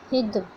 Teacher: دال زبان کی نوک سامنے کے 2 دانتوں کے جڑ میں لگانے سے ادا ہوتی ہے